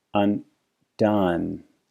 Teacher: This gentleman doesn't have the contrast: he has his schwa phoneme in both syllables.